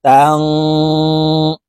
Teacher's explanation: তা নুন জবর তাং, গুন্নাহ করে পড়তে হবে, কারণ নুন সাকিনের পরে ইকফার 15টি হরফের ভিতর একটি হরফ সিন আসছে, তাই এই নুন সাকিনকে নাকের ভিতরে লুকাইয়া গুন্নার সহিত পড়ব